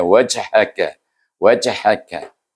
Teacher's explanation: Dan jim ini adalah huruf qalqalah, kita juga kena perlu membaca dengan qalqalah sughra, bunyinya wajhaka, wajhaka. Jadi dengan qalqalah sughra bunyi lantunannya perlahan sedikit.